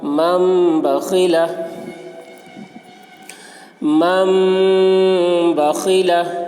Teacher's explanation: نون ساکن کے بعد با آ رہا ہے، اس لیے نون کو میم سے بدل کر غنہ اور اخفا کے ساتھ پڑھیں گے، اس کو اقلاب کہتے ہیں۔